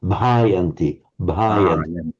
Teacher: slight overemphasis on the h, because if you can't pronounce it like a Sri Lankan or an Indian, at least slightly overemphasize it just to make sure that you aren't saying the wrong sound.